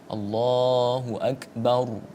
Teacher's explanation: Contoh yang lain misalnya kita dalam takbiratul ihram, Allahu akbar, ya. Akbar, ra-nya dibaca tebal, tidak boleh kemudian dibaca tipis, Allahu akbar. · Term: tafkhim